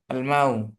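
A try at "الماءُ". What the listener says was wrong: না টান হবে তো আলমাউ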